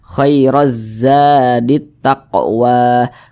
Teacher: pangkal lisan kita atau pangkal lidah kita itu terangkat ke atas ketika kita mengucapkannya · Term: dibaca tebal